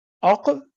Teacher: جس طرح اق کلکلہ ہے، ایک کلکلہ نہیں ہے